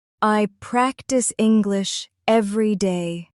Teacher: let your voice rise slightly on practice and English then fall gently at the end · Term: gentle rise and fall